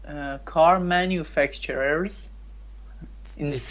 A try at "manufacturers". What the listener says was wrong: It's not facture, it's facturer. Manufacturer.